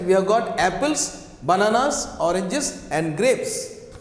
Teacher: Intonation falls on the last item to show that list is finished. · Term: rising, falling intonation